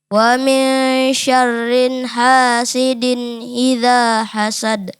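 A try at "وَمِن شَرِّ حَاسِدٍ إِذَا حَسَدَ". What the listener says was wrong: Ya, jadi syarriha, rinya tidak ada tanwin. Jadi kita langsung wa min syarriha, bukan syarrinha.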